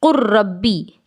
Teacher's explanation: لام کا را میں بالکل مکمل طور پر ادغام ہو جا رہا ہے ، تو اسی کو ادغام تام کہا جا رہا ہے۔ ادغام